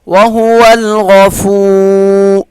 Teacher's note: فا کو ایک الف کے برابر کھینچ کر پڑھیں گے